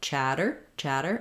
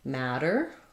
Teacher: to me um those both have the same flap sound so a flap is basically voiced we raise our tongue up to the T and D Spot but we don't build up a lot of pressure